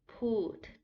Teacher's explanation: You start higher and then you go lower. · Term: falling tone